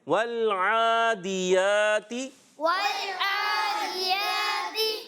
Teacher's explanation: عین تھوڑا سا حلق پر زور دیں گے نا تو عین ادا ہو جائے گا. تھوڑا زور دینا ہوتا ہے.